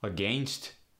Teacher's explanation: we also tend to give the a sound the short e sound